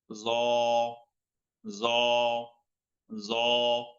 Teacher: আকার হবে না এটা, আকার ছাড়া মোটা হবে, মুখ ভরে আসবে, মোটা হবে।